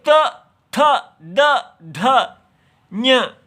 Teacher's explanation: तो दांत को जिह्वा नहीं स्पर्श करती, दंत मूल को करती है